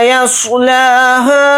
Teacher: یا کو صاد ساکن کے ساتھ ملا کر پڑھیں گے، صاد کو یہاں پر موٹا یعنی پر پڑھیں گے